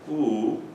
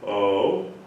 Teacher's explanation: when we say Who we're kind of small oh we open up a little bit more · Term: the vowel tunnel